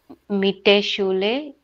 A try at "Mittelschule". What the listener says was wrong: Mittelschule, right? There was an L.